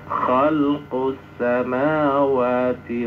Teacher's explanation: Nah, begituun syamsi itu lebur. Syamsi itu langsung enggak ada alnya dan enggak usah dengung · Nah, begituun alni ini al-nya lam itu memasukkan al-nya kepada huruf berikutnya. Maka al-nya masuk sempurna kepada sin sehingga al-nya dalam bacaan tidak nampak ada alnya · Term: idgham syamsi